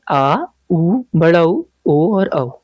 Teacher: तो ये केंद्रीय स्वर हो गया, और बाकी जो स्वर बच गए उनको हम कहते हैं पश्च स्वर, यानी कि जीभ के पिछले वाले हिस्से से जिनका उच्चारण होता है